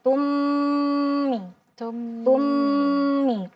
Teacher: Jadi seolah dia satu mim yang bertasydid dengan menjaga kadar gunnahnya. Jadi kadar gunnah itu maksudnya memanjangkan durasi gunnahnya masuk ke hidung. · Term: al-idgham